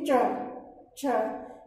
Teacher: अपन च बोलेंगे तो च बोलते वक्त हमारी जो जिह्वा है वो हमारे मुख की छत को, मतलब हमारे तालु वाले भाग को स्पर्श करती है।